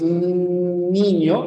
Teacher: alveolos estos son los alveolos cuando dices niño no niño ahí tu lengua está chocando con los alveolos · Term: n alveolar